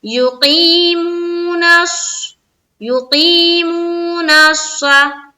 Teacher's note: منہ میں وا مدہ کرنا ہے، یعنی کہ دونوں جگہ کھینچنا ہے، یا مدہ میں بھی اور وا مدہ میں بھی. نون کو صاد سے ملائیں گے، نش، نش، اور صاد زبر صا، منہ بھر کر بولیں گے